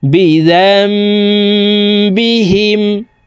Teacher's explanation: বিহিম এই জাল ছোট মিমের সাথে গুন্নার সহিত পড়তে হবে কারণ নুন সাকিনের পরে হরফ বা আসছে এই কারণে এই ছোট্ট মিম দ্বারা পরিবর্তন করিয়া গুন্নার সহিত পড়বো